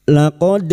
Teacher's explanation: huruf dal yang mati asli di tengah kalimat qalqalah sugra jangan lupa dipantulkan